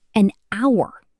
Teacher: An hour, because the H is silent, so it starts with the vowel sound, ow